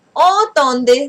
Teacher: Okay, so en is on. Okay, on nasal sound.